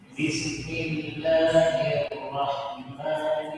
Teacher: الراء يا شباب لا تضم الشفتين عند نطقها